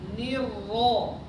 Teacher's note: Ni kondisi kasroh. Maksimalkan dulu ke i, baru nanti belok ke fathah.